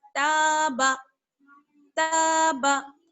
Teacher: یہاں پر الف مدہ ہے، اس لیے تا کو ایک الف کے برابر کھینچیں گے. تابا، تابا.